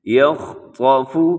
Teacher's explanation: اس میں خا بھی موٹا ہے، طا بھی موٹا ہے، لیکن باقی دو حروف وہ باریک پڑھے جائیں گے